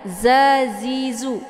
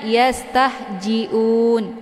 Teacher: dia sifatnya adalah sofir, maka ada bunyi angin ataupun suara siul, z ya. Kemudian ini dibaca panjang boleh 2, 4 sampai 6 harokah. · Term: huruf za